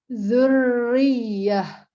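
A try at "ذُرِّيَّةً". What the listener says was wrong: Masih ketebalan. Zurri. Ro tipisnya yang agak susah.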